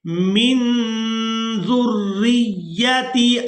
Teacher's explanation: ज़ाल को रा मुशद्दद के साथ और फिर रा को या मुशद्दद के साथ मिलाएंगे